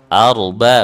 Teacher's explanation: Padahal busu, tipis sama tebal. Arba huruf ro tebal, sebelumnya tipis, di depannya tipis kan